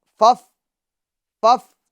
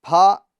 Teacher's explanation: اوپر کے دانتوں کا کنارہ اور نچلے ہونٹ کا تر حصہ ٹھیک ہے اس سے فا ادا ہوتا ہے پھا یعنی دونوں ہونٹوں کو ملانا نہیں ہے یہ غلط طریقہ